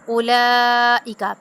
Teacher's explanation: अब यहाँ पे भी लाम पे जो है क्या है मद है, इसको 5 अलिफ के बराबर खींचेंगे